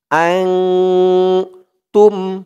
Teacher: ইখফা গুন্নাহ নুন সাকিনের পরে ইকফার হরফ তা আসছে